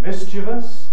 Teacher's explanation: the traditional pronunciation mischievous stressed on the first syllable